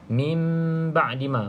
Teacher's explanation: Bacaan iqlab tu maksudnya nun bertukar kepada huruf mim. Bacaan nun tukar kepada mim.